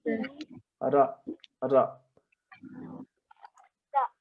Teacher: the tip of the tongue touching the part just behind the teeth